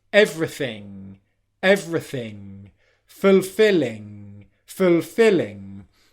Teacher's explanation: the back of the tongue comes up and touches the back of the mouth like you would if you were making a g sound. But then instead of stopping airflow and then exploding airflow out like you do when you make a g sound, g, instead airflow just keeps coming out your nose and doesn't stop. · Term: ng word ending